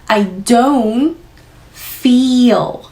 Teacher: I don't feel 장모음 넣으시고 dark L 마무리.